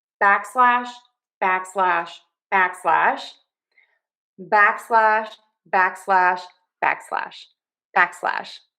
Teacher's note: stress syllable number one back unstress slash